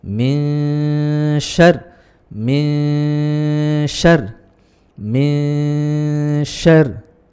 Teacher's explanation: Kemudian yang berikutnya adalah ada min syarril tadi, ya, min syarril, ada nun mati bertemu dengan shin, yang mana ini adalah hukum ikhfa hakiki, yang dibaca samar mendengung 2 ketukan 3 lepas.